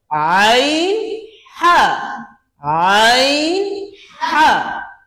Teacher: ঠিক মাঝখান থেকে হচ্ছে আইন, একটু মুখের দিক থেকে হা